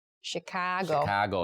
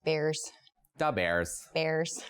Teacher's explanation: a lot of Midwestern accent draws out vowel sounds and makes them a little higher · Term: Chicago accent